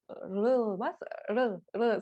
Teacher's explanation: Одан кейін кейде Р болып оқылады, кейде Л болып оқылатын Р әрпі. Негізі кәрістерде Р немесе Л деп анық әріптермен айтпайды, оларда бір Р мен Л-ның ортасындағы бір әріп.